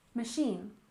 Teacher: we stress the second syllable in machine